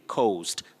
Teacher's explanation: There is that slight vowel glide O, coast.